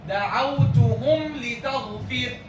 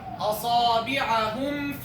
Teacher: Clearly and distinctly from the idhar shafawi letter without extra ghunnah, without any extra ghunnah.